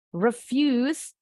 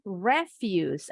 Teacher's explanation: Jadi untuk yang pertama penekanannya ada di suku kata kedua. Kalau yang ini penekanannya di suku kata pertama. Ciri. Kalau ada penekanan di suku kata kedua tuh biasanya kata kerja. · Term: syllable stressing